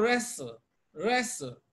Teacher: even though we have t in wrestle T is silent